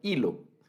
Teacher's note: la H, cuando la hablamos esa palabra, la pronunciamos, no suena, hilo. Y entonces ese es un desafío ortográfico para los que inician en la escritura del español, porque se cometen las famosas faltas de ortografía.